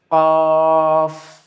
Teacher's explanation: আপনি যখন কফটা বলবেন, এখানে খেয়াল করেন যে জিহ্বার গোড়াটা উপরের তালুর সঙ্গে গিয়ে লাগবে। তো তাহলে যখন আমরা জিহ্বার গোড়াটাকে উঁচু করছি, আগাটা কিন্তু নেমে যাচ্ছে এইভাবে।